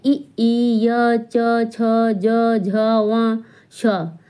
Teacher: तालु से बोले जाते हैं